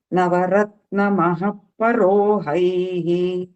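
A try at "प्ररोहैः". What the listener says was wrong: ಪರೋ ಅಲ್ಲ, ಪ್ರರೋಹೈಃ. ಪ್ರರೋಹೈಃ ಪಕಾರಕ್ಕೆ ರಕಾರ ಇದೆ. ನವರತ್ನ ಮಹಾಪ್ರರೋಹೈಃ.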